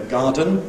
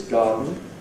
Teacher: So we have a process converting [ ən ] into [ n̩ ], [ ˈsʌdn̩ ]. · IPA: ˈgɑːdn̩